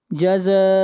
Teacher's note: زا مد متصل ہے، اس مد کو تین الف کے برابر کھینچ کر پڑھیں گے